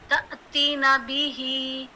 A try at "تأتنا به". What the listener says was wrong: نہیں تأتینا به، یہ جو تا ہے نا، اس کو حمزہ اس کے اوپر حمزہ کے اوپر جزم ہے نا، تو جزم کی وجہ سے اس کی جو حرکت ہوگی نا، جب ساکن ہوتا ہے تو اس میں جھٹکا سا محسوس